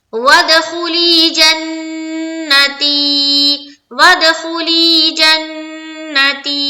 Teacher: جن میں نون مشدد کا غنہ اور تی میں یا مدہ